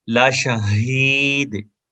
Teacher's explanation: ہا کو سینے سے ادا کریں گے